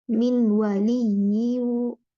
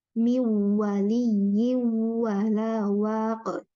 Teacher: Nun sukun ketemu sama waw ya. Itu ada sifat gunnah di situ. Tidak min waliyu itu tidak, tapi mi waliyi wala waq gitu ya, sama yang nun sukun ketemu ya.